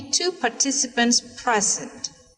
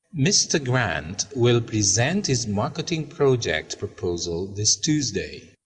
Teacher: the noun is stressed in the first syllable and the verb is stressed in the second syllable